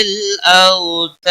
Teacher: وقف کی صورت میں دال ساکن پڑھی جائے گی، اس پہ قلقلہ بھی ہوگا ، اور 3 سے 5 الف کے برابر وقف کی صورت